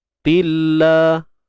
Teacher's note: kalimah Allah kita baca dengan nipis sahaja. Sebab sebelumnya baris bawah.